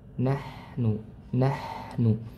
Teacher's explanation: Huruf ha di sini ya dia memiliki sifat hamas dan dan rakhawah.